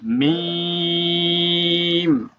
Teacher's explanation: শুকনো অংশ ভাই, দুই ঠোঁটের শুকনা জায়গা হইতে উচ্চারিত হবে।